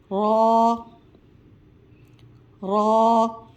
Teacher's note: را کی ادائیگی کرتے وقت زبان کے کنارے سامنے والے دانتوں کے برابر دائیں بائیں داڑھوں سے ٹکرائے گی۔ غا را را کو پڑھتے وقت تھوڑا سا زبان میں لڑکڑاہٹ محسوس ہوگی۔